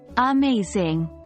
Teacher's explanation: in the word amazing, the second syllable is stressed. We say it like amazing, not amazing, or amazing.